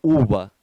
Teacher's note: o V em espanhol puxa para um som de B